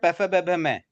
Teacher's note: और हाँ जो उसके बाद अंतिम क्या है, पैफ ब भ मैं, ये होते हैं होठ से बोलने वाले। आप होठ को खुला रख के पैफ ब भ मैं नहीं बोल पाओगे, होठ टच करने ही पड़ेंगे।